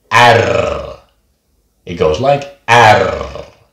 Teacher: it really rolls in front of your mouth